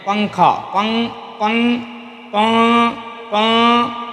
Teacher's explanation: نون کی آواز کو ناک میں چھپا کر پڑھنا چاہیے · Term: اخفاء